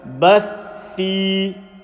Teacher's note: If you say bath and then thi, that's incorrect. You can't say bath, thi. The sound has to be held together. Bathi. So your tongue will remain underneath the bottom of the front 2 teeth. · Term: shadda